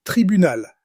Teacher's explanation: Listen for the clear final L sound.